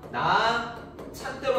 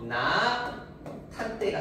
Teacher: 디귿하고 히읗이. 디귿 플러스 히읗이 만나서 티읕이 됩니다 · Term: 유기음화